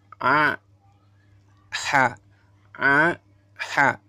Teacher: Ya, halqiyah ini yang ketiga, keluar dari kerongkongan, keluar dari tengah-tengah kerongkongan yang tepat